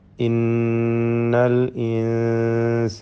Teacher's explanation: സാക്കിനായ നൂനിനെ മണിച്ചുകൊണ്ട് ഇഫ ഹക്കീഖി നൽകി അവ്യക്തമാക്കി ഉന്നത്തോടുകൂടി ഉച്ചരിക്കണം